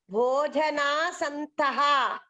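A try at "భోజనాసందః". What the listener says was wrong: సంతః కాదు సందః దావత్తుంది సందః.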